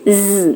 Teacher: Yang kedua yaitu voiced Z. Bunyinya mendengung, ada getaran di pita suara.